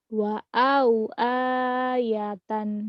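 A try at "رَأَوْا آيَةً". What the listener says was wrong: bukan wa tapi ro. Ra'au ayatan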